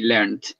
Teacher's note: in England they are a little bit more sticklers for the T sound at the end